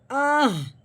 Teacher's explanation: پہلے حمزہ کی آواز نکلے گی، بعد میں ہا کی آہ